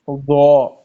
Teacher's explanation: زبان کی نوک جو ہے اس کو سامنے اوپر والے دو دان جو ہے اس کے نچلے حصے سے ملائیں گے